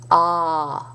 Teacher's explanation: Now, sometimes the A can have an accent circonflexe, and traditionally that A with accent circonflexe was pronounced as a back A. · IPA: [ɑ]